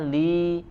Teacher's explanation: sempurnakan juga kasrahnya Lee ya tidak menjadi imalah